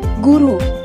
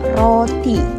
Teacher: untuk vokal u pada kata guru bibir membentuk lingkaran yang lebih kecil dibandingkan vokal o pada roti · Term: vokal bundar